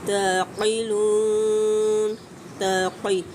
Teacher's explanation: قاف مستعلیہ حروف پر کر کے ادا کریں گے، لون پہ مد عارض وقفی اپلائی ہوگی، 3 سے 4 حرکات کھینچ کے پڑھا جائے گا۔